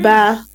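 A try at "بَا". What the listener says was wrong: No, it is written like that, but we have to stretch it for 1 second. Ba, soft and light.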